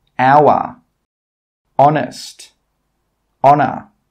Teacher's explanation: In all of these words, we are not pronouncing the H sound